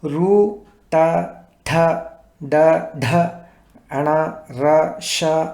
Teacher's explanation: ఇక ఋ ట ఠ డ ఢ అణ ర ష అనే అక్షరాలు మూర్ధన్ నుంచి అంటే నోటి లోపల కొండల ఎత్తైన భాగానికి ఈ నాలుక కొన తగలగా పలుకబడే అక్షరాలు